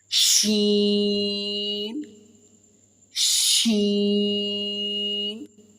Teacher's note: شین کو میں نے 3 سیکنڈ تک کھینچ کر پڑھا ہے کیونکہ شین کے اوپر مد ہے. اور دوسرا شین اور جیم کا دونوں کا ایک ہی مخرج ہے، یہ ایک ہی جگہ سے دونوں ادا ہوتے ہیں.